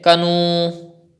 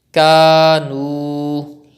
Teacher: If you say kanu, it is also wrong because you are not stretching waw madda now. So you have to stretch alif madda and waw madda both equally.